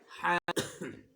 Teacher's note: یہ گلے کے حلق کے درمیان سے، وسط حلق یعنی حلق کے درمیان سے یہ ح نکلے گا۔ اور اس کو نکالنے کا طریقہ یہ ہے کہ ہمارے جو قاری صاحب تھے وہ بتاتے تھے کہ گلے کو اس طرح، یعنی یہ یہاں زبان کو گلے پہ اس طرح زور دو ہاتھوں سے، اس طرح ہا نکلتی ہے۔